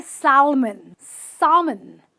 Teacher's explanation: the l is silent